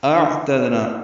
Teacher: اعتدنا حمزہ اقصی حلق سے بالجہر ادا کریں گے، عین وسط حلق سے ادا کریں گے. تا کو دال سے ملانا ہے، دال ساکن پہ قلقلہ ہے، نا الف مدہ ہے، 2 حرکات لمبا ہے.